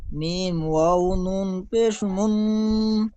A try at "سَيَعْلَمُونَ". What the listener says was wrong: বানান করবার সময় মিম ওয়াও নুন পেশ মুন বলে গুন্না করেছেন, টান হবে, গুন্না হবে না। মিম ওয়াও নুন পেশ মুন, মু বলে টান দিয়ে লাস্টে নুন, মুন।